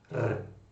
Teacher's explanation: Que é diferente do R no português mais formal, que seria um r. Então, esse r, assim, que envolve a língua, e nem tanto a garganta, não é tão gutural